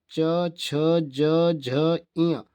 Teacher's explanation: चा वर्ग तालव्य होते हैं, तालु से बोले जाते हैं